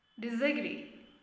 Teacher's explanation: A gets a schwa sound.